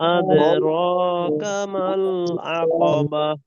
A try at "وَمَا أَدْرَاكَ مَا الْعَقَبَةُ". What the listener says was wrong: আদে এই এরকম যেন এ এর মতো না হয়, ইকারের মতো দে না, দ আদ আদ ওয়ামা আদরাকা মাল আকাবাহ